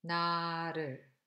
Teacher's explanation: the flap R, like Japanese and Spanish R, it occurs between two vowels syllable initial